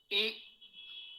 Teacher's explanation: ई में जिह्वा आपकी तालु की ओर जाएगी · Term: तालव्य